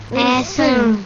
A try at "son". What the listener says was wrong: No pronuncien tanto la N. No, la N no suena. Saquen la A por la nariz. Son.